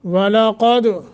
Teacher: क़ाफ को मोटा दाल पे कलकला